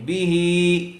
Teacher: ہی بھی ہی با کے نیچے زیر ہے جلدی پڑھیں گے. ہا کے نیچے کھڑی زیر ہے اور کھڑی زیر برابر ہوتی ہے یا مدہ کے اسی لیے اس کو تھوڑا کھینچ کر پڑھیں گے